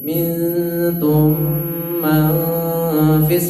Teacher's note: Idgham mimi dibaca dengung. Nun mati ketemu fa itu ikhfa, dengung juga.